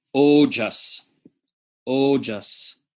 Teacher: like toe or no but tighter tighter diphthong as if you were to pronounce toe or no no right